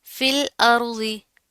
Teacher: अब यहाँ पर क्या, तनवीन है, उसके बाद हरूफ इख्फा में से फा आ रहा है, तो यहाँ पर हम गुन्ना करेंगे, फिल अर्ज़ी। लाम को आपने हिलाना नहीं है, बारीक पढ़ेंगे, और आगे ज़ौद मोटा है, मोटी पड़ी जाएगी।